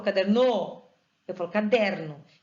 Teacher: o der é a sílaba tônica dessa palavra. Ela só não é acentuada porque ela não está de acordo com a regra, que nós vamos ver depois, certo?